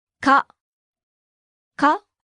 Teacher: Note the rising intonation.